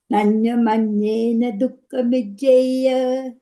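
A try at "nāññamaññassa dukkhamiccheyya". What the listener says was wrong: You put the instrument, you said Nanyamanyena. that how you chant it? It's Nanyamanyasa in the text we have.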